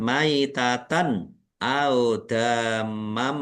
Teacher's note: Fathah tanwin bertemu dengan huruf mim, idgham bi gunnah, masuk dengan mendengung. Mendengung mim ditandai mimnya ada tasdidnya, ditahan biar tampak mendengung.